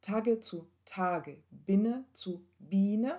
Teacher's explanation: Ta, diese Silbe, die ist offen und die wird gedehnt. Also der Vokal wird gedehnt.